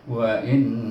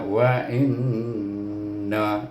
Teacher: oleh kerana nun bertasydid mempunyai hukum, iaitu wajib digunahkan, wajib bergunah dengan dua harakat. Wa in, baru kita bariskan nun baris di atas bunyi na, wa inna, dah dengung baru pergi pada na.